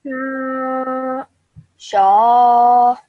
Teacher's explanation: the sound of sha is stretched out for around 3 seconds